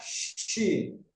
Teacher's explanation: Kemudian ada hembusan angin dari tengah-tengah lidah itu, mempunyai sifat tafashi. Jadi ada hembusan angin yang keluar, yang mengalir di tengah-tengah lidah.